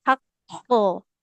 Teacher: Jangan hak. Jadi حق pantulannya sempurna. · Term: Qalqalah